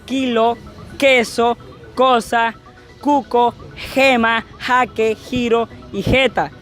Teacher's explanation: La lengua pega con la parte trasera del paladar, haciendo así que el sonido suene como la G o la J. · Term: Fonemas velares